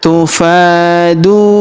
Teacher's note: Huruf du kita panjangkan dua harakat karena wau sukun di depannya.